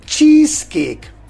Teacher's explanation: K which is voiceless so because of the initial sound Cur the final sound in cheese which is z will become s · So the final consonant in cheese, that is voice z, and in cake the initial sound is k, which is voiceless. So because of the initial sound k, the final sound in cheese, which is z, will become s, and we will pronounce in connected speech as cheesecake, not cheesecake.